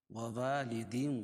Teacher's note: تنوین کے بعد حروف یومین کے 4 حرفوں میں سے واو ہے، اس لیے ادغام مع الغنہ ہوگا